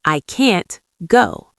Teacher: In I can go, we squeeze the word can and make it very short, in go. But in I can't go, we make the word can't longer and louder.